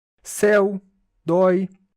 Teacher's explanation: Observem que os ditongos são abertos. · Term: ditongos abertos